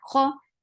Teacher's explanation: kha is heavy for fatha open your jaws. The sound is very short.